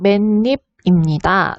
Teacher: 맨과 입이 결합하면서 바로 니은 첨가가 일어난 것을 확인할 수가 있었습니다